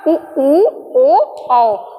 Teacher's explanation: तो हमारे होंठ कैसे हो जा रहे हैं? पूरे गोलाकार हो जा रहे हैं। ठीक है, पूरा वृत्त बन जा रहा है। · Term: व्रतमुखी स्वर